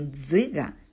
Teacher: Ми чуємо твердий приголосний ДЗ на початку слова